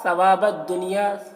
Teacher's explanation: ثا کو باریکی کے ساتھ ادا کریں گے۔ واو میں الف مدہ ہے، ایک الف کے برابر کھینچیں گے۔